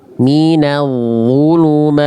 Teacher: Nih, sifat dari huruf ta ada 5 dan nggak ada sifat yang namanya sofir atau berdesis. Nah, yang nampak dari ta sukun ketika dia sukun itu hams atau percikan nafas · Nah, percikan nafas nggak ada bunyi s.